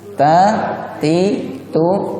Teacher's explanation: Ada hembusan napas, bukan desisan, tanpa ada bunyi desisan. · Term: hams